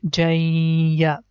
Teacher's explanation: jim with fatha tain and we pronounce it like jan and if the next letter yeah is coming so it means that this jan sound is going to merge with ya and sound becomes jay and then the second part is letter